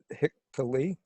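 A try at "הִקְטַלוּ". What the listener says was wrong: Oh, it's a u ending.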